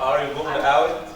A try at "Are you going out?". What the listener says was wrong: Rising. Very good.